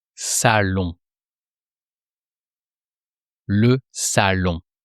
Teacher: And you don't pronounce the N of salon. It's just the sound on. You have a O, and then the N is just here to make a more nasal sound. · the N is just here to make a more nasal sound. It turns the sound O into on.